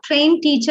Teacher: you feel that the ed, the d sound goes missing. It's omitted.